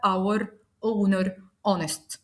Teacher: بالرغم ان ال3 كلمات بيبتدوا بحرف الاتش وهو حرف ساكن الا لانه سايلنت احنا نطقنا تاني حرف الاو، فبالتالي بقت اور ساعه، اونر شرف، اونست شريف، وبالتالي النطق نطقته حرف متحرك اذا فحطيت اداه التعريف طيب انا كده اتلخبطت، اقدر اميز الموضوع ازاي؟